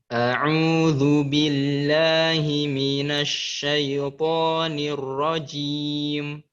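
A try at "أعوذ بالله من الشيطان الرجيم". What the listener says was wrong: Zal jangan terlalu kuat saat. A'udzu bukan zu.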